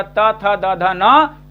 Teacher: ये दंत से उच्चारित, इसलिए दंत है। और त वर्ग पूरा पूरा त थ द ध न दंत से उच्चारित होता है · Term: दंत्य